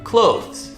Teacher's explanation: the two consonant sounds back to back it's the voice th the and then Z right after